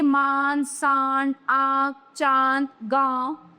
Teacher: फिर आता है अनुनासिक नस्ल, वर्णों के ऊपर लगने वाले चंद्र बिंदु को अनुनासिक कहते हैं। अनुनासिक वाले वर्णों के उच्चारण में हवा नाक और मुंह दोनों से बाहर निकलती है